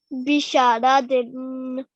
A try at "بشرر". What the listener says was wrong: It's a ra at the end. بشرر.